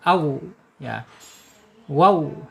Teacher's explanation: Makhrajnya ada di asyafatain ya. asyafatainnya yaitu dua bibir.